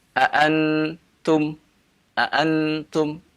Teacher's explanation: Nun sangat jelas terdengar ini berarti dia membaca dengan condong ke idhar